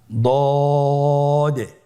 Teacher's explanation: দদের মাখরাজ জিহ্বার গোড়ার কিনারা সামনের উপরের দুই দাঁতের গোড়ার সঙ্গে লাগিয়ে উচ্চারিত হয়